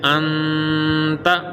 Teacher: اخفا کریں گے، یعنی غنہ کر کے پڑھیں گے